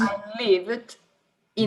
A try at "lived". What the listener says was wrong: livid, careful, livid é com muita raiva. Lived. I lived in Portugal.